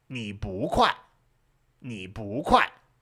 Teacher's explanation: if it comes right before a 4th tone, then 不 switches to 2nd tone